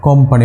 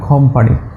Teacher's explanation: ব্র্যাকেটে আমি খ লিখেছি কারণ নেটিভ স্পিকাররা সাধারণত যেখানে আমরা কর মতো উচ্চারণ করি তারা সাধারণত খর দিকে নিয়ে যায়, যেমন কোম্পানি, ওরা সাধারণত বলে খম্পানি।